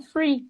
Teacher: não falam com TH, eles fazem mesmo com F, com som de F